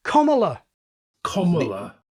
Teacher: Comala is too short. And besides, the quality is wrong. Our short O is rounded.